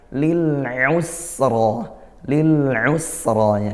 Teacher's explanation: ra di akhir mad tabi'i, dan juga dia ra-nya tafkhim ya